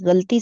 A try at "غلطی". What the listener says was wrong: اچھا، غلطی نہیں ہوتا، لام پر زبر ہوتا ہے۔